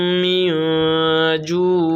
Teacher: من پہ اخفا ہوگا، اس لیے کہ نون ساکن کے بعد حروف اخفا کے 15 حرفوں میں سے جیم آ رہا ہے